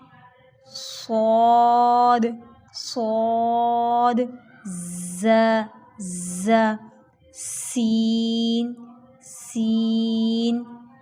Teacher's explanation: ऐसे हरूफ जिनके अंदर आपने सीटी लेके आनी है। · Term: सीटी वाले हरूफ